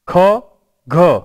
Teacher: એટલે કંઠમાંથી નીકળતા આ ચાર શબ્દોમાં ક, ખ અઘોષ છે, ગ, ઘ ઘોષ છે, ક અને ગ અલ્પપ્રાણ છે, એવી જ રીતે ખ અને ઘ એ મહાપ્રાણ છે. એટલે કે ત્યાં વાયુનો ફોર્સ એ વધારે પ્રમાણમાં લેવાય છે.